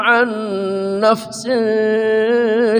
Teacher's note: nun mati bertemu nun namanya idgham bi gunnah, dengung sama.